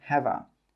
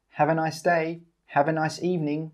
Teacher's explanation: The 'have' and the 'a' come together and we say 'hava'.